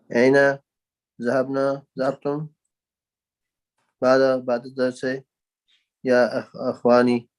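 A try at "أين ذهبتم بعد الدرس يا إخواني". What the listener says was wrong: MashaAllah. That was very quick.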